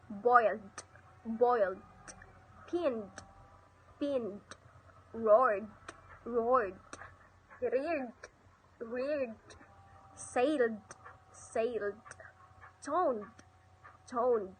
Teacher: in all cases where the final ED is preceded by other consonants, the final ED is given the sound as D